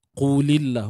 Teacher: Kalimah Allah di sini lam lafzul jalalah kita baca dengan nipis sahaja.